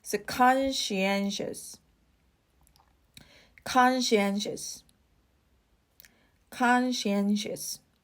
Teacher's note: the stress is on the first syllable and the third one